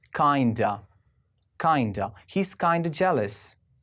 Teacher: whenever you have this word kind of you can squeeze it or you can reduce it to kinda